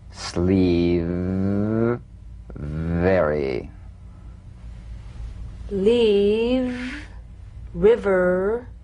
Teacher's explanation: lower lip vibrating that's what makes the sound you'll feel a gentle dark buzzing vibration on the lower lip all suggestion of the eff must be out of there otherwise